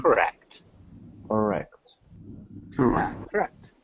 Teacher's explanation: really emphasize the second syllable so it sounds more like correct correct correct correct good and